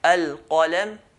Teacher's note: qaf is right at the back, near the throat